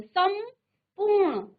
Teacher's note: जो म था वो अनुस्वार हुआ है क्योंकि म के बाद प आया है